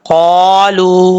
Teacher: لام کے بعد واو ساکن سے پہلے پیش ہے، واو مدہ ہے، ایک الف کی مقدار اس کو لمبا کر کے پڑھیں گے